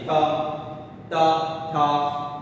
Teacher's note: दांत के साथ हमारी जीभ टच हो जाती है, थ त थ, बोलिए त थ, तो ये हमारी जो जीभ है वो दांत के साथ टच हो जाती है हमारे।